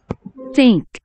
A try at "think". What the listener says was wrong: 혀 물고 있어, 지금. 자, TH는 Th 된 것 같지 않나요? Think면 I가 지금 무슨 소리 내고 있어? E.